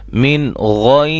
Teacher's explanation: را ساکن سے پہلے یا ساکن آ جائے تو اس را کو ہم باریک پڑھیں گے